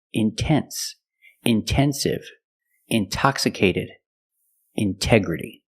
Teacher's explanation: The stress is after the NT in these words. So we pronounce the T as a pure T.